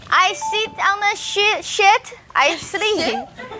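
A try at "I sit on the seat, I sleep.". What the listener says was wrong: 不 是 ▁sit ▁on ▁the ▁shit, ▁sit ▁on ▁shit ▁好 像 坐 在 大 便 上 面 。 OK, ▁这 是 长 音 嘛 ▁？Shit, ▁I ▁sleep.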